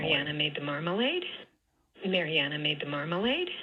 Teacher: down low, and then it rises at the tail end because this is a yes-no question.